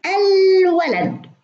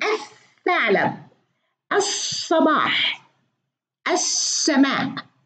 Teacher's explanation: في الولد الولد ننطقها، ننطق اللام، لكن الثعلب، الصباح، السماء اللام ما تنطق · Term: اللام الشمسية واللام القمرية